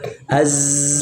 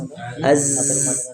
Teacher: Zai itu ada getaran makanya Zai itu tidak dimasukkan di Hamas dia masuk di suara saja yang mengalir